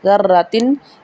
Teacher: دال کو نرمی سے ادا کیا جائے گا، را کو موٹا پڑھا جائے گا